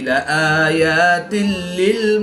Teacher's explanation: 2 ज़ेर की तनवीन के बाद लाम हरूफ यरमलून में से है, तो यहाँ पर इदगाम बिला गुन्ना होगा, यानी कि बगैर गुन्ना के इदगाम करके पढ़ेंगे।